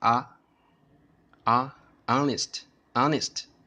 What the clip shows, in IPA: ˋɑnɪst